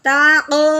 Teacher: قوف حروف قلقلہ ہے، حروف قلقلہ کے اوپر جزم آ جائے تو اس کو ہلا کے پڑھتے ہیں